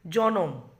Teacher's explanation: সংযুক্ত ব্যঞ্জনের মাঝে একটি স্বরধ্বনি আসছে বলে ন আর ম যে কাছাকাছি ছিল সে কিন্তু দূরবর্তী হয়ে গেছে, ওই জন্য মধ্য স্বরাগমের আর এক নাম হচ্ছে বিপ্রকর্ষ। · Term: স্বরভক্তি